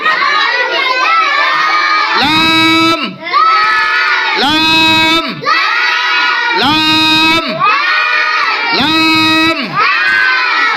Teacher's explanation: জিব্বার আগার কিনারা সামনের উপরের দাঁতের মাড়ির সঙ্গে লাগিয়ে লাম হরফটি উচ্চারিত হয়। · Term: 8 নম্বর মাখরাজ